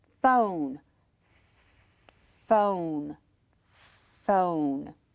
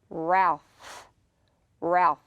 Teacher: just slightly watch my mouth and then the sound is going to be created with the breath that comes between the edge of your teeth and your lower lip